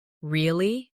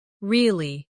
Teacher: Say, really? With a rising tone to show surprise. Now say, really? With a falling tone to show you don't believe someone.